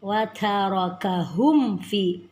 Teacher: Ini kembali kita bertemu dengan ilhar syafawi, mim sukun dengan fa. Jadi bacaan tidak boleh didengungkan. Hum fi ada mad tabi'i, kemudian uluma ma mad tabi'i lagi, jadi panjangnya cukup 2 harakat.